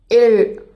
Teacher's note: நாக்கோட நுனி அன்னத்தோட நுனியை கொஞ்சம் பின்னாடி போய் வளைஞ்சு தொடாம கொஞ்ச நேரம் தொடர்ந்து இருக்கும். அப்போ காற்று நாக்கோட இரு பக்கமாக தடை இல்லாமல் வெளியேறும். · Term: தொடரொலி